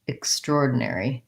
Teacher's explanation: And that's where the stress lies, extraordinary, on the or. So it sounds like extraordinary.